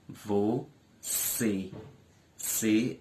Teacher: é a sílaba mais forte da palavra é a sílaba tônica e também é a última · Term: oxítona